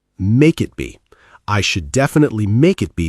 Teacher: It sounds like one single word when we speak fast.